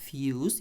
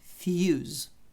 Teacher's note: я тут букву S виділила жирним тому що між голосними цей звук отзвінчує і це буде як з